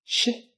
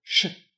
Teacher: We'll start with a consonant that sounds a lot like English's shh as in chef, which is Russian's sh as in chef. If you listen carefully, you can hear that in Russian, the pitch of the consonant drops a bit.